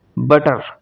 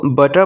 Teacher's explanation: रा साउंड को जो है अमेरिकन स्पीकर जो है वो प्रोनाउंस करते हैं, जबकि ब्रिटिश स्पीकर्स रा साउंड प्रोनाउंस नहीं करते। फॉर एग्जांपल अगर हम एक वर्ड बटर की अगर एग्जांपल लें तो ब्रिटिशर इसको बटर प्रोनाउंस करते हैं कीपिंग द रा sound silent, while American pronounce it as बटर with रॉ sound.